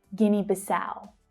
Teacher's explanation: So the stress is on the last syllable in the second word. It's the ow, as in now, vowel sound. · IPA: /aʊ/